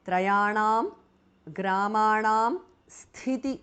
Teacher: The first thi is mahapranah.